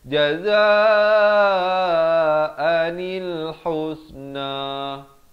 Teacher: Kemudian ditambahkan dengan nun dan diberikan step yang ketiga, baris kasrah. Di sini bila nun baris kasrah naik di atas lam yang bertanda mati jadi jazaanil husna